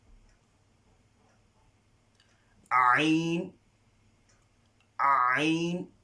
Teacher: So remember, ain is from the middle of the throat.